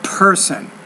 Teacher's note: the P you need to pronounce that with more air